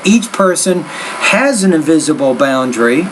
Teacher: So you take the S and you link it to the next sound. That's called blending.